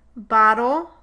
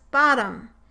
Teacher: in words in which a vowel occurs before a dark l the velarization tends to pull the vowel back somewhat and make it more back · can you hear the difference in the pronunciation of the schwa in bottle being a bit further back than the schwa and bottom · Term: backing